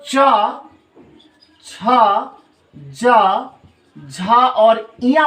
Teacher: इसका उच्चारण स्थान कठोर तालु होता है, और चूंकि तालु होता है इसीलिए इनको तालव्य व्यंजन कहते हैं